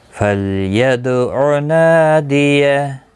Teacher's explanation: فل لام ساکن کو ہلانا نہیں، دال ساکن پر قلقلہ ہوگا. نا الف مدہ ہے، ایک الف کی مقدار کے برابر کھینچ کر پڑھیں گے.